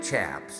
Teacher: the ch sounds really pronounced with an sh sound